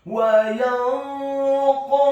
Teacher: Huruf nun yang sukun bertemu dengan huruf qaf yang fathah. Hukum bacaannya adalah ikhfa, dibaca secara samar-samar.